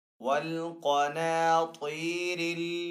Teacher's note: काफ हरूफ मुस्ताली में से तो काफ को यहाँ पे पुर पढ़ेंगे